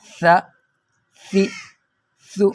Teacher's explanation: جب آپ اپنی زبان کی نوک کو اپنے دونوں درمیان والے اوپر والے دانتوں کے ساتھ لگائیں گے تو سا ادا ہو جائے گا ۔ سا زبر سا، سا زیر سی، سا پیش سو، سا